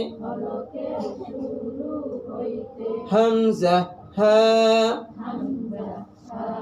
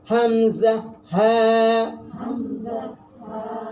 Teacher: হলকের শুরু হইতে হামজা হা, একবারে সহজ ভাবে হামজা হা।